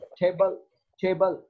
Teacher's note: in the word table, the first syllable te is more prominent